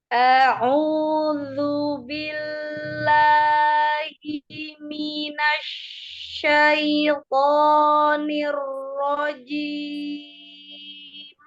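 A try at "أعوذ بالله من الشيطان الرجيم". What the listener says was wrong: Ya, nirojimnya belum dapat ya. Nironya itu masih terpengaruh bibir bawahnya ke depan. Niro begitu ya. Tapi langsung abis dia turun, dia langsung turun lagi. Niro, ya kan langsung dibuka. Nirojim.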